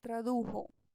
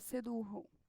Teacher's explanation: o som também do J em espanhol vai ser sempre pronunciado como som de R e nunca como som de J